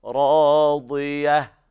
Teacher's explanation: بين الضاد من الدال، فخم الضاد